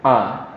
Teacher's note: alif itu kita mengucapkannya, pengeluar makhraj hurufnya adalah dari dada kita, yaitu huruf A.